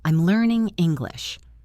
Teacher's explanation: Let your voice fall on English. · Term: falling intonation